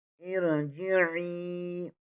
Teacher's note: आइन ज़ेर के आगे या मद्दा है, इसे एक अलफ़ के बराबर खींच कर पढ़ेंगे।